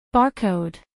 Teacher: a pronunciar en inglés por hablantes nativos barcode dos sílabas barcode acentuación en la primera sílaba barcode pronunciación según el alfabeto fonético internacional barcode a continuación un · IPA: ˈbɑrˌkoʊd